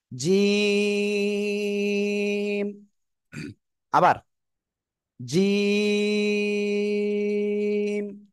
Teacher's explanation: জিম অক্ষরটা উচ্চারণ করব কোন জায়গা থেকে জিহ্বার মাঝখান তার বরাবর উপরে তালুর সাথে লাগাবো লাগিয়ে আমরা উচ্চারণ করব শক্ত আওয়াজে